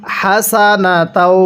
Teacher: স্মরণ রাখবেন এই হাগুলো উচ্চারণ করার সময় মুখ দিয়ে হালকা বাতাস বের করতে হবে।